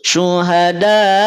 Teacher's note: Tadi hamzah dia punya sifat syiddah, maka ketika sukun suaranya ditahan atau terhenti. · Syiddah suara ditahan, jahr napas ditahan. Artinya ketika diucapkan hamzah itu jangan sampai suara kita dialirkan, tapi suara kita menjadi terhenti.